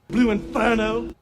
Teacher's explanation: southern english accents are non-rhotic you leave the r sound out after a vowel in a word like inferno